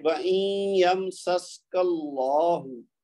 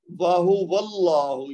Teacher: کاف کے اوپر زبر ہے نا تو اللہ کا لام موٹا پڑا جائے گا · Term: مفخم